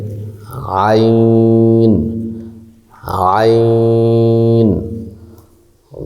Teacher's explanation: আইন হারফটি কণ্ঠনালীর মধ্যখান হইতে